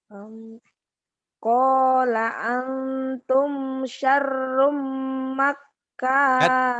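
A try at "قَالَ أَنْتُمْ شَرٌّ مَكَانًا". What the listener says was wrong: Jangan makana. Gak ada tasdid di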